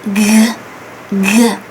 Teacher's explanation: There is a voice when you pronounce it, and also there is friction because it's a fricative consonant. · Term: the G sound